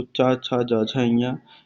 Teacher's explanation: तो तालु से उच्चारण होने वाले, जब आप बात करते हैं चा वर्ग की, तो चा, छा, जा, झा, इया, ये तालु से उच्चारित होते हैं